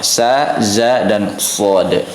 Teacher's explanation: keluar dari ujung lidah bertemu dengan gigi seri atas, gigi seri bawah ya, sejajar dengan gigi seri bawah